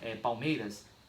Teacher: Então, na palavra Palmeiras eu tenho um ditongo, mas foneticamente eu tenho 2, porque o A e o U se transformou aí, na verdade o L se transformou em U, juntando com o A e o U vira um ditongo.